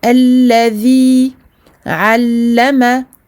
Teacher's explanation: la langue sous les incisives supérieures pour le dhal. Donc on sort un tout petit peu le bout de la langue.